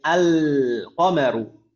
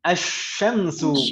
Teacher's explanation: Kalau qamariyah itu al-nya dibaca jelas, kalau huruf syamsiyah jika mengawali kata ism dan ism tersebut ditambahkan al, maka lamnya idgham langsung ke huruf shin. Tidak terbaca jelas.